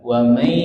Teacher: suara yang keluar dari hidung ditahan 3 tekan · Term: gunnah